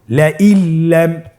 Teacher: নুন সাকিনকে আমাদেরকে পরবর্তী হরফের সাথে মিলিয়ে গুণা ছাড়া পড়তে হবে।